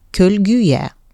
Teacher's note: Y bitişdirici samitinin saitlə bitən sözlərə artırıldığı məqamda sözün son saitdən öncəki son saiti ondan əvvəl gələn saitin qapalı variantı ilə tələffüz olunmalıdır.